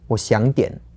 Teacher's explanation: So that's like half a third tone, a second tone, and then a third tone again.